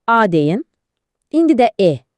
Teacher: A deyəndə dil arxaya çəkilir. Bunlar qalın saitlərdir. E deyəndə isə dil önə gəlir. Bunlar da incə saitlərdir.